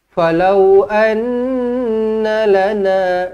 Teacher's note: Falau anna lana, nun sabdu wajibul gunnah, dengungkan 2 harakat. Tetapi pendek, dia dengung tetapi dia pendek. Anna lana, jangan anna lana.